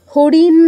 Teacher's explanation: দন্তন্য মূর্ধন্যতে কোন পার্থক্য রাখি না। হরিণ যেভাবে বলছি বোন সেভাবেই বলছি।